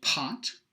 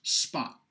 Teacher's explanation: In one of them, I am inserting a breath of air, an aspiration, and in another, I am not. The aspirated one has a much longer VOT than the unaspirated one.